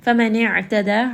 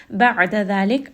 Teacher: Ain has tawassut from the middle of the throat